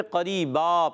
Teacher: قریباً کو وقف کرنے میں قریبا پڑھتے ہیں، تو را یا زری یا مدہ ہے، ایک الف کھینچنا ہے، اور را کے نیچے زیر ہے، باریک پڑھیں گے، دو زبر کی تنوین کو الف سے بدل دیں گے، اس کو کہتے ہیں وقف بالابدال مال الف۔